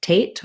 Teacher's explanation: we have a true t in hesitate so i don't change it to a d or a flap